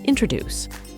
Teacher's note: the word is stressed on the third syllable, not on the first syllable, as some may have mistaken it.